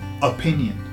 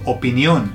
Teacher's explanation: So the emphasis goes on the last O.